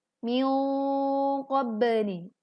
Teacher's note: Kemudian min qabli, dengungkan dengan suara yang tebal. Min qabli, pantulkan ba sukun dengan jelas.